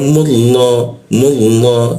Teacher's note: lam bertasyidnya dibaca ke arah o dia jadinya